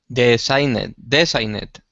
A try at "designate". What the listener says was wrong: So the only mistake you're making is that that I symbol in English in the IPA is pronounced like an I, like an I. So not designate, but designate.